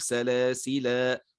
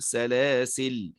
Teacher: عند الوقف على كلمة سلاسل يجوز فيها وجهان، إما الإثبات نثبت الألف فنقول سلاسل، ويجوز فيه الحذف فنقول سلاسل.